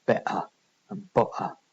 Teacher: the Cockney accent makes use of these glottal stops